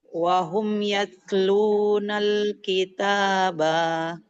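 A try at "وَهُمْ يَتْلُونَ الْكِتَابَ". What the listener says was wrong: Nggak boleh kitabah, jadinya sukun. Wahum yatlunal kitab.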